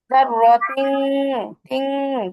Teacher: গুণনা করতে হবে, আবার নাকের ভিতরে ঢুকাইতে হবে। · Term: ইকফা গুণনা